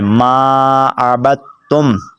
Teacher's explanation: بعض لوگ یہ دال بھی پڑھ بیٹھتے ہیں اور تا بھی پڑھ بیٹھتے ہیں، تو ایک چیز پڑھنی ہے، اپنے با کو تا کے ساتھ ملانا ہے